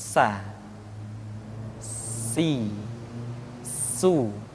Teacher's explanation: Di antara sifat yang menonjol ketika kita mengucapkan huruf sa atau huruf sin adalah sifat as-safir, di mana ketika kita mengucapkan huruf sa ada suara tambahan yang menyerupai dengan suara belalang.